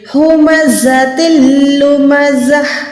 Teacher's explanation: زا سیٹی والے حروف ہے، آپ نے یہاں پر وسل ساؤنڈ پروڈیوس کرنی ہے